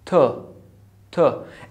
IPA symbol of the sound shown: ʊ